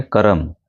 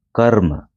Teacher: जब हम किसी कर्म की, काम की बात करते हैं तो र हमने जल्दी बोला, कर्म। जब जल्दी हम र बोलते हैं तो उसको रेफ से हम दर्शाते हैं कर्म, ठीक है।